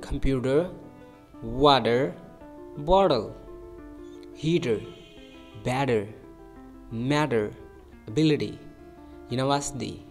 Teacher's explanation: it becomes like a soft D or flap T. A flap, which means the tongue touches the roof of the mouth quickly